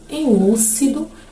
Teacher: Em lúcido, o lu, aí a sílaba lu é a nossa sílaba tônica, logo temos a palavra proparoxítona.